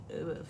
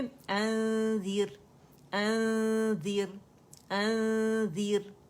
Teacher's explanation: नाक में इसकी आवाज़ आपने फील करनी है, जो आपका इख्फा हकीकी है, ठीक है, जो गुन्ना है, क्योंकि थोड़ी सी आवाज़ मुंह से आती है और ज़्यादा आवाज़ नाक से आती है, याद रखिएगा, ठीक है।